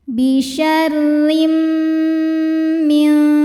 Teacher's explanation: maka bunyi tanwin dileburkan ke mim disertai bunyi dengung. Jadi bunyinya M dan tahan. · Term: idgham bil gunnah